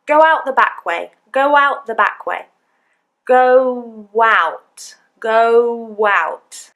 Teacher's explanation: between the two vowel sounds, we've added a w. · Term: intrusive W